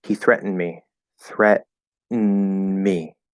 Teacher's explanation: I'm not doing the D at all · I'm doing that stop T in the middle, threat, and then I'm saying threat. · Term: syllabic N